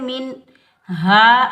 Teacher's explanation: اس ہا کو حلق کے درمیان سے ادا کریں گے. ہا کے اوپر زبر ہا کو ہم یا ساکن کے ساتھ ملائیں گے.